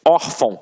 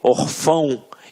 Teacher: reparem que a sílaba tônica está na penúltima sílaba. Por isso é uma paroxítona.